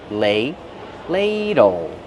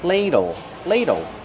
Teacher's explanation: use a long A sound like pay and say, lay, ladle.